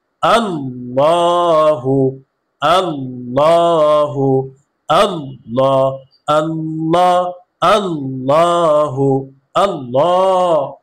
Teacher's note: আল্লাহর সাথে লামের পূর্বে জবর আসছে। এ কারণে আল্লাহর সাথে লামকে পুর করে পড়তে হবে। অর্থাৎ মোটা করে পড়তে হবে।